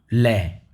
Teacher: ल है वह पार्श्विक व्यंजन है